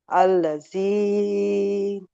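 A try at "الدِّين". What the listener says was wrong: না ওটা দাল আদ্দিন।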